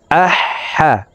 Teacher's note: মাখরাজ হলকের মধ্যখান থেকে হবে